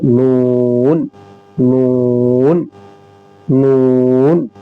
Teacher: नून जबान का किनारा एक नाभ से लेकर दूसरे नाभ तक और ऊपर के दांतों के मसूड़े से नून निकलता है